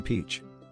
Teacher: P. With aspiration, sounds like P. In peach.